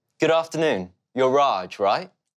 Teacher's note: his voice goes up at the end of the question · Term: rising intonation